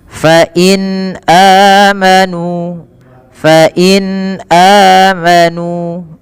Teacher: Apabila ada huruf hamzah bertemu dengan huruf mad, baik itu alif, waw atau ya, maka ia dibaca dengan dua harokat huruf hamzahnya. Dan tidak kita hukumi dengan mad tabi'i. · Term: mad badal